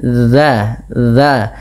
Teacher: Ujung lidah kita tempelkan dengan gigi seri atas kita, atau kita menempelkan ujung lidah dengan ujung gigi seri atas sehingga terdengar bunyi za. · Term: zal